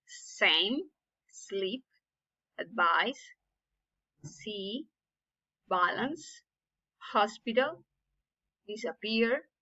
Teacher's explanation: it is an unvoiced, which means that we don't use the vocal cords to make the sound · it is called the voiceless alveolar sibilant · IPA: /s/